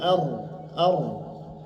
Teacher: semacam getaran pada lidah pada ujung lidah ar ar bir irtiad dan khfian dengan getaran yang tipis ar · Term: takrir